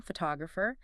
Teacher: Add the suffix for the person photographer. See how the stress jumped to the second syllable.